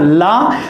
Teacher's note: आप बोल के देखना ला, जैसे ही आप ला बोलोगे तो जो हमारी जीभ है वो मुड़कर मसूड़े यानी हमारे मूर्धा को स्पर्श करेगी, और जो हमारी श्वास वायु है वो जीभ के किनारों से होते हुए बाहर निकल जाएगी, इसलिए बोलते हैं पार्श्विक।